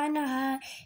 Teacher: হলকে মধ্যখান হইতে আইন হা